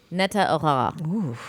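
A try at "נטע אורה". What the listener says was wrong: She's not that guttural R isn't really flowing off the back of your throat, but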